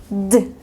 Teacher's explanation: Ponen la lengua detrás de los dientes superiores y suena D. Sale aire en presión.